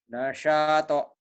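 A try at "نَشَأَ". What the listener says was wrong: Pendek. Nasyato. Iya tapi pendek. Nasyato gitu. Nasyato. Maksudnya jangan nasyato. Jangan. Nasyato.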